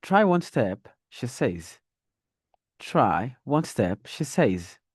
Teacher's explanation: when I was at the comma, I used the rising tone, more or less like I'm dragging the last word to show that I have more to say.